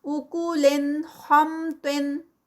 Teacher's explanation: یعنی کلیئر نون جو ہے وہ پروناؤنس ہوگا، وہ پتہ چلے گا سننے والے کو کہ ہم اظہار کر رہے ہیں